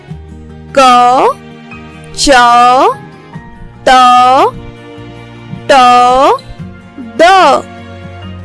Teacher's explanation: जब मैं स्वर सहित व्यंजन का उच्चारण कर रही थी तो अ की ध्वनि आपको सुनाई दे रही होगी।